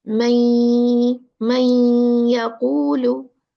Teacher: It's the merging. We merge the noon with the ya because ya is the merging letter for noon sakina and tanween. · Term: idgham